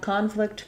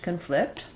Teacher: for the noun we have first syllable stress and for the verb we have second syllable stress